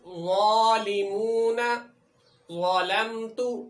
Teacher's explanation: زبان کو ذرا پھیلا کر سامنے والے دانتوں سے لگا کر موٹا کر کے ادا کریں گے تو کبھی بھی غلط نہیں ہوگا، مثلا ظالمون، ظلمت۔